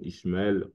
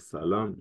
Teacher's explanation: les Juifs vont souvent dire le SH comme Ishmael au lieu de Ismaël